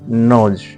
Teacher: N, voiced, alveolar, nasal, as in nose